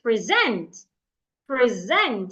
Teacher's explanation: It is the zent that I'm saying louder, longer, and clearer.